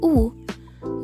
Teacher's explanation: Bunyi U dihasilkan oleh posisi lidah yang berada di belakang dan rahangnya tertutup. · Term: fonem U